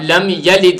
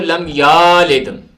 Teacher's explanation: یا کے اوپر زبر ہے تو اب اس کو کھینچتے نہیں ہیں، کسی نے اس کو لم یالد کھینچ کے پڑھ دیا، تو یہ اس طرح کرنا بھی غلط ہے۔